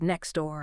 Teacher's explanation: Saying that crisp T sound in next and then immediately shifting to the D sound in door is actually quite a bit of work for the mouth, especially in fast speech, >> right?